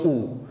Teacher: আমাদের জিহ্বার উচ্চতা কিন্তু উপরের দিকেই থাকে। পিছনে কিন্তু উপরে ঠিক আছে? এবং আমাদের ঠোঁটের আকৃতিটা অর্থাৎ ঠোট যে অবস্থান হয় ঠোটের যে আকৃতি হয় সেটা হয় সংকৃত।